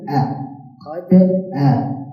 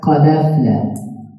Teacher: Asqata means to remove. So the hamza itself is going to be removed in pronunciation. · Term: isqat